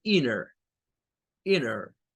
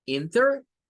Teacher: Eso siempre pasa cuando la N está a la par de una T. Y es una mañita que tienen la mayoría de norteamericanos, de no pronunciar esa T y seguir como que fuera nada más una N.